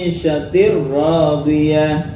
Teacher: Idgam bila gunah ya tanwin kasrah bertemu roadiah ya diidgamkan tanpa dengung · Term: Idgham bila gunah